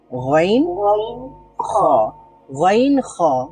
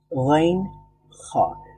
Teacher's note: খ বলার সময় সেখানে এক ধরনের ভাইব্রেশন তৈরি হয়